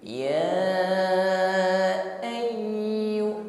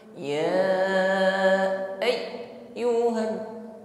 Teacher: bunyi huruf ya tidak boleh sampai putus, tidak boleh tertahan, ya, karena sifatnya layyinah dan rakhawah